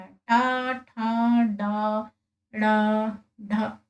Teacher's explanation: मूर्धन्य जिनका उच्चारण मूर्धा से होता है